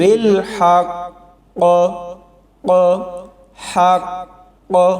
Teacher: شد والا حرف پہلے ہی جھٹکے سے پڑھا جاتا ہے اور پھر اوپر سے قلقلہ بھی شامل ہو گیا، تو اسی وجہ سے یہ لفظ زیادہ قلقلے کے ساتھ پڑھا جائے گا